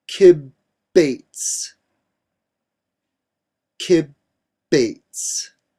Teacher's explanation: and for that reason we know that it the dous strong signifying doubling or lengthening of that B sound